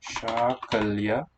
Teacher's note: It's a long ah there always in syllable 1.